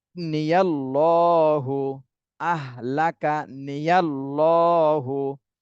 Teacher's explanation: আল্লাহ শব্দের ডানে জবর আসছে, এজন্যই আল্লাহ শব্দকে মোটা করে পড়তে হবে।